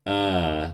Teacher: this is like an ah but with the rounded lips